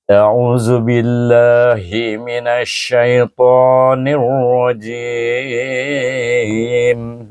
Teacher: Berakhir dengan mim yang tertutup bibir kita